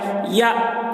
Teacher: حمزہ ساکنہ کا پڑھنے میں جھٹکا ہوتا ہے